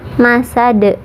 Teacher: qalqalah kubro atau qalqalah besar, karena huruf qalqalahnya ada di ujung atau di akhir ayat. Huruf qalqalah yang disukunkannya yaitu dal.